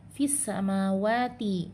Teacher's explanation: lamnya dimasukkan sempurna ke dalam huruf sin, tidak dibaca, maka hukumnya adalah idgham syamsi atau alif lam syamsiyah.